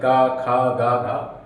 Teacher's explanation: गले से आवाज आ रही है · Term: कंठ